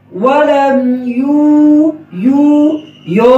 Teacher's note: آگے چلتے ہیں، ولم یولد ولم، لم میں آواز جاری رہے گی، واو میں ہونٹ گول ہوں گے